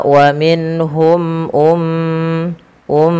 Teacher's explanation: tahan suara m ya karena ia mim berharakat tasdid dan kita hukumi dengan bacaan gunah tahan teman-teman ya maka wamhum Um Um harus ditahan whum Um